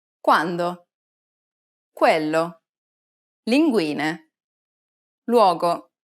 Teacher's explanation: When U precedes another vowel, it takes on a W sound.